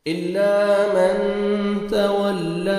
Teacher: الا من، تا کو باریک پڑھنا ہے، تولا، لام کے اوپر کھڑا زبر ہے، الف مدہ کے قائم مقام ہے، 1 سیکنڈ آپ نے لام کو کھینچنا ہے